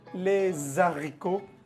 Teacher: Les haricots, ahí no se hace liaison, es prohibido. J'aime les haricots, así no se pronuncia la H.